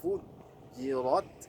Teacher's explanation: Tipis fa-nya, jim tipis, ro-nya tebal, kembali ta-nya tipis kembali